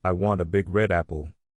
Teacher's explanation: The word red is important, so we say it louder.